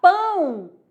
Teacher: Pão, ó, o A é vogal, o O é semivogal. Quando eu falar pão, esse O sai o som de U.